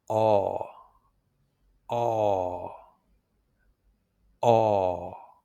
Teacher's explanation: It's a longer, rounder sound, and it comes from the back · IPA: /ɔ/